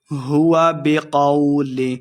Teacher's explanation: ہوا بقول، قو کو لمحہ نہیں کریں گے، قاف کو موٹا پڑھنا ہے